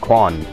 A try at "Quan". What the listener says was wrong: Definitely not Quan. I think with Q's is pronounced as a CH, I think.